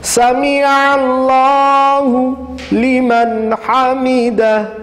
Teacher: عین نکال کے گلے کے درمیان والے حصے سے، سمیع اللہ لمن حمدہ، حمدہ ہا نکالنا ہے اور آخر میں ہا، حمدہ حمدہ۔